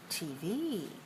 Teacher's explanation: Stress the second of the 2 letters. When you have letters together as an abbreviation for a long word like television, we put the stress on the last letter.